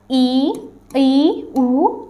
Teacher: इन स्वरों के उच्चारण में मुंह सबसे कम खुलता है